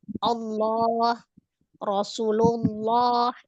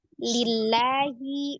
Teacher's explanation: Ketika sebelum laf jalalah itu ada huruf yang berharakat fathah ataupun domah. Maka dia dibaca tebal.